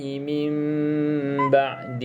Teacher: bacaan tutup mulut rapat ataupun regang sedikit dengan kadar dengung ada 2 harakat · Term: iklab